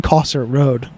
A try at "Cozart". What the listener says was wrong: I think it's Cozart. I think it's a Z. Cosart. I've always called it Cosart.